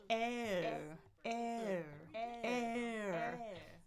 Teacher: Tongue was in the front. Jaw was pretty open. Jaw closes. Tongue pulls to the middle.